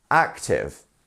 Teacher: Active. Yeah, you're going up and then down, right? It's 1, 2.